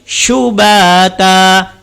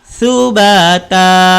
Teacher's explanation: Makhrajnya sin, hujung lidah belakang 2 gigi depan.